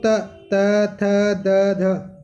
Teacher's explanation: देखो त बोलो त, त थ द ध, जीभ कहाँ पे आके टकरा रही है दांत पे, तो दंते वर्णों में जीभ दांत पे आके टकराती है